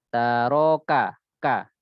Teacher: Kafnya lebih dikuatkan syiddahnya daripada hamasnya.